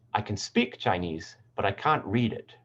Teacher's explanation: the content word is changing to speak comparing speak with read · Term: focus word